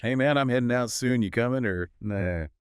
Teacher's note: You've got the dropped G in headin' and comin'.